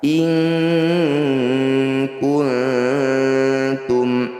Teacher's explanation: Nun sukun bertemu kaf disebut bacaan ikhfa, namanya ikhfa ab'ad. Bunyi nun sukun awalnya in, karena bertemu kaf kita ganti jadi inku. Bunyikan dengungkan 2 harokat.